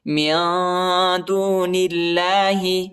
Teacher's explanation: اللہ کے نام کو اب جو ہے موٹا نہیں پڑھنا ہے، ٹھیک ہے، باریک پڑھنا ہے، کیونکہ ادھر زیر آیا ہے، نون پر زیر آیا ہے. جب بھی زیر آئے گا کسی حرف پر، اللہ کے نام سے پہلے کسی حرف پر زیر آئے گا تو اللہ کے نام جو ہے موٹا نہیں پڑھنا ہے، باریک پڑھنا ہے، نرم پڑھنا ہے.